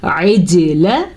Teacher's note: عین کو واضح کرنا ہے، جیم پہ کلکلا کرنا ہے